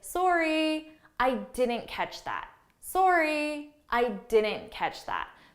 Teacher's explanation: when you say sorry it's natural to have a rising intonation with it